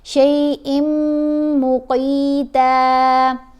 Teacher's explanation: اب شیئن نہیں پڑھنا، مشدد میم آ رہی ہے نا تنوین کے بعد، یرملون ہے تو حمزہ کو میم سے ملانا ہے اور غنہ بھی کرنا ہے